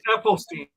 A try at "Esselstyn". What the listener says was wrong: I don't think it's Ethel, but anyway,